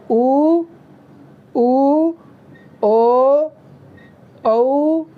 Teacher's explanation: जिन स्वरों के उच्चारण में हम लोगों का ये जो दोनों लिप्स है, अपर और लोअर जो लिप्स है, इसका आकार बिल्कुल गोल हो जाता है, ठीक है। इस तरह से बिल्कुल जब गोल हो जाता है तो उसको वृत्तमुखी कहा जाता है।